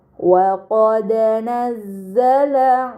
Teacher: terdapat huruf dal sukun ini dinamakan qalqalah maka harus dibaca secara memantul